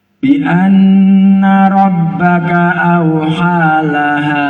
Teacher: huruf nun yang ada tasjid itu hunnah, diling-iling.